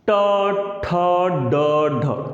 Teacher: जिह्वा हमारी ऐसे थोड़ा सा मुड़ करके ऊपर मूर्धा में स्पर्श करती है। मूर्धा, मूर्धा किसे कहते हैं, तालु से बाहर और दांत से थोड़ा सा पहले, तालु से बाहर और दांत से थोड़ा सा पहले जो अंदर सूखा सा स्थान गड्ढा सा होता है वो स्थान का नाम है मूर्धा। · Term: मूर्धन्य व्यंजन